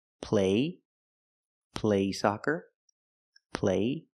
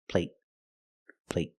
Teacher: there's no stop T the vowel is longer · They're the same vowel, they're the long A. But the stop T at the end makes the long A a little shorter.